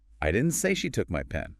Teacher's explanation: Stressing I focuses on the speaker not being the one.